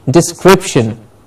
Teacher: Description. Crip gets the stress.